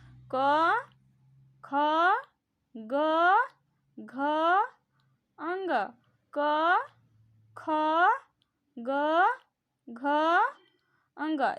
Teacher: ये कंठ से आवाज निकल रही है, इसलिए इसको कंठस्थ व्यंजन कहते हैं